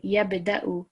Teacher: we have ba over here, which is a qalqala letter, so we're vibrating that slightly. So yabda'u, 1 second on there.